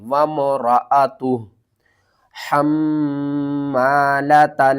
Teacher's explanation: میم مشدد ہے، یہاں پر آپ نے غنہ کرنا ہے